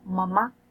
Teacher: Si el velo del paladar desciende, el aire, el sonido pasa hacia la nariz y la nariz se convierte en cavidad de resonancia. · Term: nasales